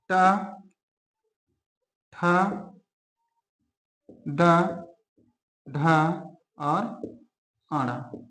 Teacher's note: तो ट वर्ग का जो उच्चारण स्थान है वह है आपका मूर्धन्य। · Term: मूर्धन्य व्यंजन